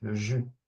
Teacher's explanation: Okay, the S at the end is not pronounced.